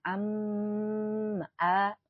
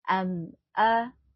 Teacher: lain kalimat dinamakan Mad Jais munfasil hza am a ada ada mim sukun bertemu Alif nah ini dinamakan dengan izhar syafawi dibacanya jelas ya jangan didengungkan